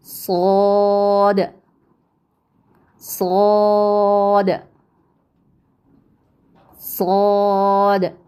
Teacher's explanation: جب ہم اس کو کھینچتے ہیں تو آخر میں دال کی جو آواز آتی ہے تو دال ساکن ہونے کی صورت میں قلقلہ ہوتا ہے